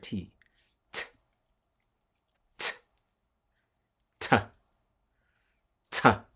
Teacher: you take the vocal cords off now you have the letter t